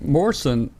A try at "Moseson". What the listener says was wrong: throw another s in the middle and you've got it